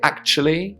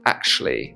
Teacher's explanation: Now, the pronunciation of actually depends on where you're from. So I say actually with a ch sound, but some people might say actually with a sh sound